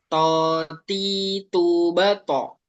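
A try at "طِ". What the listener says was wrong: Udah lebih mending hanya saja tadi ketika kasroh masih tipis. Yang perlu diperhatikan ketika kasrohnya. Coba buat bagaimana ketika kasroh ini dibaca seakan-akan baca fathah dan domahnya tadi. Yang sudah bagus tebalnya.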